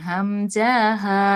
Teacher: এক নাম্বার মাখরাজ হালকের শুরু হইতে